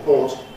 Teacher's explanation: I don't have an R or any kind of a trace of an R in these words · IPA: [pɔːt]